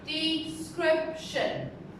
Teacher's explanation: So the stress is on the second syllable.